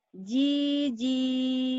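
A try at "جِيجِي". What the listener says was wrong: Salah. Iya, kenapa panjang? Pendek.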